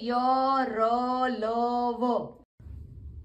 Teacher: तालू दांत और होटों के परस्पर सटा में से होता है किंतु कहीं भी पूर्ण स्पर्श नहीं होता अतः ये अंतस्थ व्यंजन है